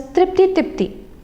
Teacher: the consonant clusters are getting simplified in the reduplicant